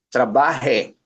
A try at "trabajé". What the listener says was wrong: trabajé. Notice, 'di ba yung accent mark nasa dulo? So nandun ang diin, trabajé.